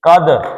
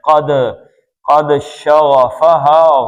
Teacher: ہی، یہ آپ دیکھیں یہ بھی دو حرکتیں اس کی، قد، قاف موٹا پڑھنا ہے، اور دال کا کیا ہے؟ قلقلہ ہے ، قد، قد شغفہا، غین کو پر پڑھنا ہے، شغفہ، ہا